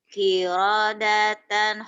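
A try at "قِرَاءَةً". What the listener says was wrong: enakan kirodatan kan pendek ya mah yang pendek mah jangan dipanjangin kirodatan gitu.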